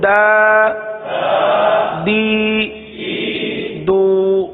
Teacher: حروف مدہ کو ایک الف یعنی 2 حرکات کے برابر کھینچ کر پڑھتے ہیں، تو یہ کھڑی حرکات حروف مدہ کے قائم مقام ہے، اس لیے کھڑی حرکات کو بھی ایک الف کے تک کھینچ کر پڑھیں گے